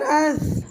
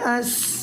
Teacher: محترم ساتھیوں، آپ نے دیکھا کہ سا کو ہم نے نرمی کے ساتھ باریک پڑھا اور سین کو ہم نے سیٹی اور سختی کے ساتھ باریک پڑھا، تو سا اور سین کے مخرج میں بہت زیادہ فرق ہے، ان کی ادائیگی اور مخرج بہت الگ الگ ہیں۔